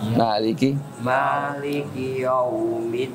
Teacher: Jadi monyongnya itu pas di wawnya, jangan yow. Ya-nya masih senyum